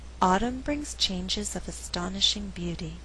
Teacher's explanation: The verb brings is not stressed because I want to create a good rhythm in the sentence. I alternate the stress, and what results is a rhythm like this: dun da dun, dun da dun, 1 and 2 and 3 and 4.